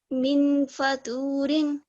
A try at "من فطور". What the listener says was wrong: فا کے اوپر دمہ ہے. فا کے اوپر دمہ ہے, فو ہے.